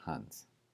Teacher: that's a voiceless s just an S sound not a Z sound